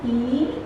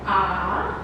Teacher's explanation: the mouth is really close in comparison with the mouth of ah that's very open